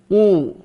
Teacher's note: qaf berharokat dhammah, bibirnya dimonyongkan